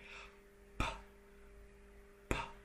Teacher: The P sound, right? So that is a bilabial stop, because you stopped the air, you dammed it up, and you released it